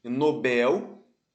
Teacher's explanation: Nobel a sílaba tônica é a última sílaba sílaba tônica é a sílaba pronunciada mais forte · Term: oxítona